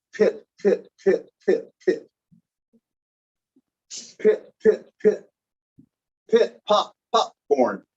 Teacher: Now, do you notice that you're getting a puff of air, right?